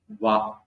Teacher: சொல்லணும் இந்த எழுத்து வகாரோ தந்திய ஓஷ்ட் அப்படின்னு பாணினி சீக்ஷா இலக்கணம் சொல்லுது வா சொல்லும்போது அது பல்லும் உதடும் பட்டுச் சொல்ற எழுத்து வா மேல் வரிசை பல்லும் கீழ் உதடும் வா இதுதான் வகாரோ தந்திய ஓஷியக இது மட்டும்தான் பல்லும் தடம் சேர்ந்து சொல்ற